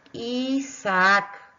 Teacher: queda una vocal en una sílaba y otra vocal en una sílaba ambas vocales son abiertas por lo tanto estoy en presencia de un hiato